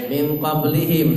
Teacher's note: Min qablihim, nun mati ketemu dengan qaf. Qaf itu sifatnya tebal, maka ketika ikhfa itu nunnya langsung menuju ke tebal.